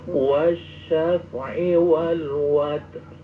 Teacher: Asalnya watri, tapi itu ri-nya disamarkan.